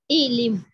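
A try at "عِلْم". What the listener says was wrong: लिम नहीं लम, इलम, ये जैसे इस्मा, ठीक है, वो इद्रिब में होता है दोनों जेर, यहाँ इस्मा की तरह इलम, ठीक है,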